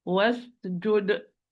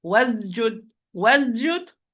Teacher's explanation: Wasjud, was as flow of breath, flow of sound because it's rahwa, it's soft, flow of breath because it's mahmus, it's whispered